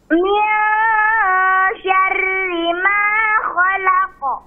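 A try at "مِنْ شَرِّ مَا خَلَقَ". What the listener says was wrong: Bagus. Selanjutnya.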